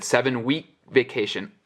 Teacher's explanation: Almost saying the K, but not.